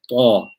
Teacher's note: You can feel the tongue being put upwards and it coming into contact with the upper palate of the mouth, forming almost 2 parallel levels to one another. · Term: itbaq